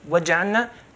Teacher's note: If we say waja'alna, if we say so fast, and waja'alna is skipping the lam, okay, going from ayn to noon. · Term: damj al-huruf